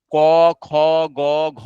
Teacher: ক খ গ ঘ উচ্চারণের সময় শ্বাসবায়ু কন্ঠে স্পর্শ করে